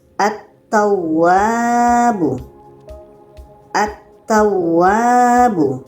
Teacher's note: lamnya tidak dibaca terus kepada huruf yang ada tasydid atau syaddah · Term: alif lam syamsiyah